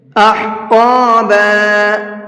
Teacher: ہا کو حلق سے نکال کر کے پڑھیں گے اور قاف کو پر کر کے پڑھیں گے، منہ بھر کے پڑھیں گے